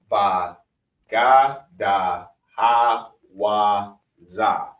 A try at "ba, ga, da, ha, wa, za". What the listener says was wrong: I think you're actually saying it too slow. It blurs the rhythm. If you just say Abba, Gada, Ha, Wa, Za, it's easier to repeat.